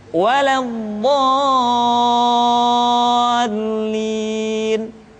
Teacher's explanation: Contoh, al-haqqah, atau kalau dalam surat Al-Fatihah, waladdallin. Bo dibaca panjang, suaranya tidak diayunkan karena setelah tanda panjang diikuti oleh huruf yang bertasydid.